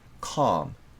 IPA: kɑːm